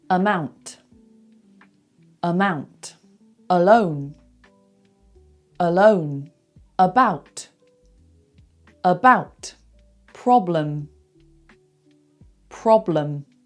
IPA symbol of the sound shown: ə